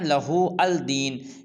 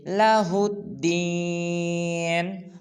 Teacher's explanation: ہا کو دال مشدد کے ساتھ ملائیں گے